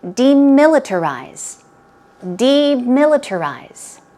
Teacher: stress goes on mill the second syllable